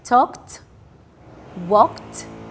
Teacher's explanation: Both of them ends with ka, and ka is a voiceless sound, so we're gonna pronounce ed as t sound